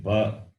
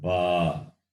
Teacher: One is short vowel a. The second one is the long vowel a. That's got 2 units of time.